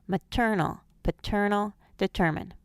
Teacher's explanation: the words are accented on the second syllable so the unaccented syllables will sometimes schwa maternal paternal determined the first and last syllable schwa and maternal · The first and last syllables schwa in maternal and paternal, but the first syllable retains its long sound in determine.